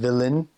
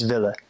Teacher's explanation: And they drop the N when they say it. They just don't pronounce it. So instead of willen, it's ville.